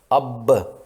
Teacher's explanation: مثلا اب کہنے کے لیے دونوں ہونٹ مل جاتے ہیں، اندر کی ہوا ہونٹوں کے بند ہونے سے منہ کے اندر رک جاتی ہے اور دوبارہ کھولنے پر یہ ہوا باہر نکلتی ہے اور ہمیں قلقلہ کی آواز سنائی دیتی ہے، اب۔